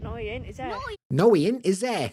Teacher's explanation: what you'll find with like Manchester they get this kind of clipped sound at the end